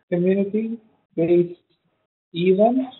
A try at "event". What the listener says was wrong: Vent. Stress on vent.